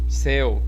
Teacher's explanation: Preste atenção como não é anasalado e é como se estivesse empurrando a palavra à frente, boca fora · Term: ditongo aberto